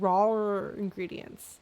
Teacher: word ingredients also starts with a vowel no consonant so again because it's a British actor she has to put an r in there so that she can flow the words